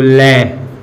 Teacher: पार्श्विक का अर्थ होता है बगल में, यानी हमारी जीभ के आसपास से जो वायु निकलती है उसे हम पार्श्विक कहते हैं।